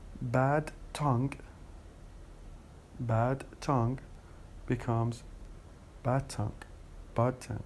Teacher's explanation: We change the D into T.